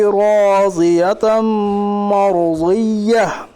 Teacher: 2 ज़बर की तनवीन के बाद हुरूफ यौमिन के 4 हरफों में से मीम है, इसलिए इदगाम नाक़िस होगा, यानी मिलाकर गुन्नाह के साथ पढ़िए। रा मुतारिक के ऊपर ज़बर, इसलिए रा मुतारिक पुर पड़ी जाएगी।